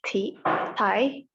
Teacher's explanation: It's voiceless alveolar plosive.